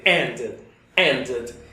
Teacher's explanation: Recuerda, entre la I y la E. Ni para allá ni para acá. En el medio, justamente.